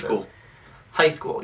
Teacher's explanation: The first syllable has the emphasis. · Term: emphasis on the syllable